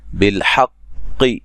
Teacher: قاف کو موٹا ادا کریں گے اور حا کو قاف سے سختی سے ملائیں گے